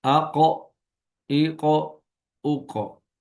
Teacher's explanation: تو کاف باریک اور بغیر جھٹکے والی آواز کے، ادائیگی کے وقت زبان کی جڑ کو کوے کے قریب تالو پر لگائیں گے، جیسے اک، اک، اک۔ اور قاف موٹی اور جھٹکے والی آواز، ادائیگی کے وقت زبان کی جڑ کو کوے کے متصل تالو پر لگائیں